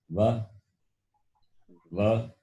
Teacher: It is combination of the two places of pronunciation, teeth as well as the lips. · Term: dental as well as labial